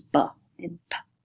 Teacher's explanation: you've got your bilabial sounds that are made with two lips, because lips in adjective form is labial, right?